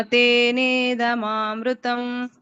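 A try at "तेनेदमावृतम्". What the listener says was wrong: ವೃತಂ ಅಲ್ಲ, ವ ಇದೆ ಮಾತಾಜಿ. ಮೃತಂ ಅಲ್ಲ, ದಮಾವೃತಂ. ಮೃತಂ ಅಲ್ಲ, ದಮಾವೃತಂ. ತೇನೇದಮಾವೃತಂ.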